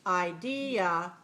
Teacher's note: The second syllable is long and clear.